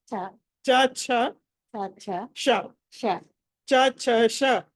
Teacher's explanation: షా అన్నది మనం చా ఎక్కడి నుంచి పలుకుతామో షా కూడా అక్కడి నుంచే పలుకుతాం